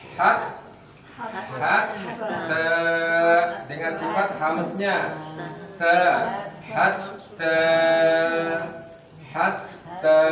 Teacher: ujung lidah yang menyentuh pangkal gigi seri atas. Sentuhkan ke sana.